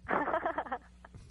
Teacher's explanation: that huge escape of wind when you laugh very breathy